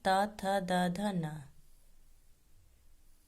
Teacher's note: इन वर्णों का उच्चारण करते समय दंत को स्पर्श करते हुए निकलते हैं, इसलिए इसे दंत्या वर्ग भी कहते हैं।